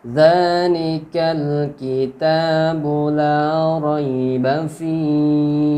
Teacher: Za dipanjangkan sampai 2 harakat ya. Taknya dipanjang 2 harakat.